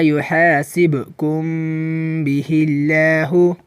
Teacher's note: هر کله چې د میم ساکن نه وروسته حرف با راشي نو په دغه میم ساکن کې به د یو الف په مقدار غنه د اخفا کیږي